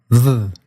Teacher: this was made by bringing your bottom lip close to your upper teeth but not letting the two touch